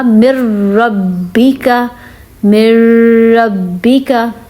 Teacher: تو جس حرف پہ حرکت ہوتی ہے اس کو تشدید کے ساتھ ملاتے ہیں. اب میم را زیر مر ہوگا، من ربی کا نہیں ہوگا، مر ربی کا